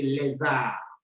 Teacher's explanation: Since R begins with a vowel, you change the pronunciation of the S to be Z, Z, and you join the two words, le and arbre, to say les arbres.